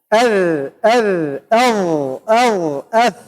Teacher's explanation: من طرف اللسان مع طرف الثنايا العليا